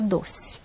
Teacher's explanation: Mas a maioria dos brasileiros acaba mesmo falando E como se fosse I. Você escreve doce, mas fala doce.